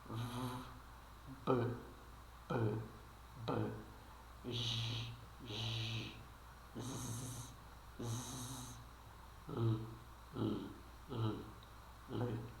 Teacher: Se você puser a mão na garganta e produzir esses sons, você vai perceber que eles vibram a garganta. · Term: som sonoro